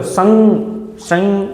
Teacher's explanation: એની ઉપર માથે મીંડું હોય તો સંગ શંગ અવાજ આવ્યો શંગ સ ની ઉપર થડકો લાગે છે એક પ્રકારનો વજન પડે છે કોના લીધે વજન પડે છે આ અનુસ્વારના લીધે એટલા માટે આ